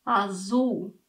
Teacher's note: Portugal seems to make that L disappear while whereas Brazil says it like a W. Neither of them really says that clear L sound like we would expect from English.